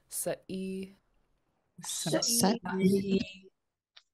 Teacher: It's a glottal stop. So you're just stopping the air in your throat, just like when you say uh-oh, you stop the air